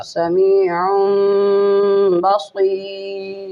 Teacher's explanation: تنوین کے نون کو میم سے بدلا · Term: اقلاب مع الغنہ